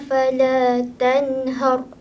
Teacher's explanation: terus baca dengan terang nyata tanpa dengung.